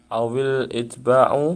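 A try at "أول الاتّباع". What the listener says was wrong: Ini salah ya, harusnya awil ittiba. Ditasydid taknya kemudian diginikan. Itu salah, bukan itba. Awil ittiba.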